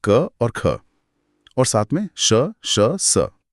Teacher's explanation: अघोष ध्वनियां वो हैं जिन्हें बोलते समय गले में कोई खास कंपन नहीं होता।